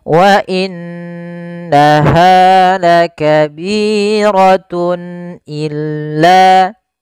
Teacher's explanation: Kemudian pada lafal tun illa, di sini ada izhar halqi, yaitu suara tanwinnya harus dibaca dengan jelas karena ketemu dengan huruf hamzah